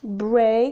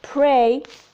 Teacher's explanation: you have the two phonemes /b/ and /p/ both are bilabial plosives